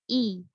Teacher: sempurnakan harokat kasroh hamzah, keluar dari pangkal tenggorokan, ya, jelaskan hamzahnya i.